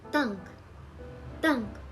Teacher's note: this consonant is a tense version of Tik it is pronounced with more tension similar to a hard T sound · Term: tense version of tikut